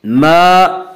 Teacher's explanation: ما الف مدہ، الف ہمیشہ مدہ ہوتا ہے، الف سے پہلے زبر ہوتا ہے۔ الف مدہ کو ایک الف کی مقدار کھینچ کر پڑھتے ہیں۔